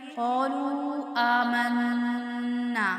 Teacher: قَالُوا آمَنَّا نون مشدد پہ غنہ کریں گے